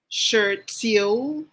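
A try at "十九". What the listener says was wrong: kindly pronounce the nine properly that is third intonation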